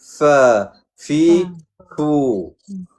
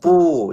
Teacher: Gigi atas dan bibir bawah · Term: makhraj fa